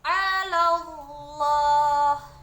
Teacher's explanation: lafaz lam pada Allah dibaca tafkim karena dia sebelumnya ada berbaris huruf yang berbaris fathah